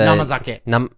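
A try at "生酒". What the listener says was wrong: It's kizake. Kizake, actually. Kizake. No. It's the same kanji, but it's pronounced ki.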